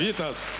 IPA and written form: ˈvʲitəs (Vitas)